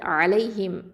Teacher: அடுத்தது அலைஹிம், ஐன் ஃபதா ஐன் அப்படிங்கிறது வசத்துல் ஹல்கு நடு தொண்டை எழுத்து. லாம் ஃபதா யாசுகோன் லை, இது என்னது யாவுல் லீன்.